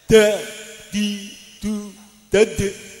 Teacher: dal ini nafas dan suara harus ditekan. Nah, maka tidak banyak nafas keluar